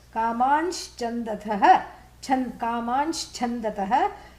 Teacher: by Sandhi, the Anuswara, takes on an additional sibilant